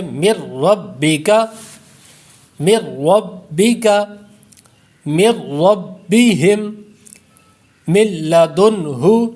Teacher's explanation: اخفا میں تو مطلقاً ہم غنہ کر دیتے ہیں، لیکن ادغام یرملون میں یہ فرق ہے، ایک بنیادی ہے کہ را اور لام میں بغیر غنہ کے ہم پڑھیں گے